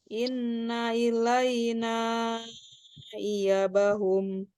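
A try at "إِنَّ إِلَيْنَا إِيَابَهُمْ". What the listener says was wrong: Iya, ya-nya panjang.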